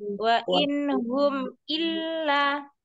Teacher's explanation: lamnya ada tasdidnya Umi, didabelkan